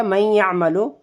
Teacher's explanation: اس میں ہلکی یا کی بھی آواز آ رہی ہے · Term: ادغام ناقص